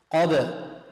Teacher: يجب أن نقلقلها، نجعل الحرف يضطرب في مخرجه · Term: قلقلة